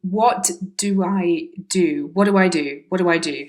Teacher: the fast version with the t missing on what and then a link between do and i